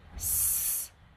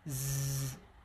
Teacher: So if you if you cover both your ears with your fingers and try to make the sound s this is a voiceless sound and if you also try to make the sound z this is a voice sound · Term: Voiceless and voiced sounds